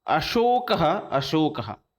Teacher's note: अशोकों में जो स आता है वो तालव्य स का ही प्रयोग किया जाता है